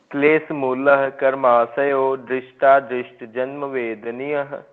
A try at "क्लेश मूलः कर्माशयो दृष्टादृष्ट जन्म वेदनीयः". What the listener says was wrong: आप क्लेश मूल के बाद थोड़ा सा रुकेंगे। क्लेश मूलः कर्माशयो दृष्टादृष्ट जन्म वेदनीयः।